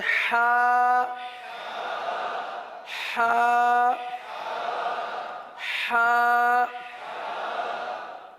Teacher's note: اب اس کی ادا کے لیے جیسے بعض اسلام بھائی عذر بیان کرتے ہیں کہ ہم سے ادا نہیں ہوتا، تو تھوڑا سا کوشش یوں کر لیجئے کہ صرف ایک سمپل آواز نکالیں، حرف ادا نہ کریں. سمپل آواز سانس کی، جیسے ٹھنڈا پانی پیتے ہیں تو کیسی سانس نکلتی ہے ایک طریقے سے نا، وہی کیفیت، اسی کیفیت میں نکال لیں.